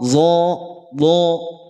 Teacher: Tapi kalau yang tebal maka vokalnya bukan A lagi. Dia berubah menjadi O. · Dia tebal karena apa? Karena pangkal lidahnya naik, PLN. Pangkal lidah naik.